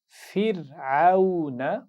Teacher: تو یہاں پر اس لفظ میں بورڈ پر دیکھیے، یہاں پر ہم را کو پڑھیں گے باریک، اور اس کے بعد عین کے مخرج کا خیال رکھنا ہے، واو لین کی آواز کا بھی خیال رکھنا ہے. آخر میں نون پر زبر ہے تو اس کو کھینچ کر نہیں پڑھیں گے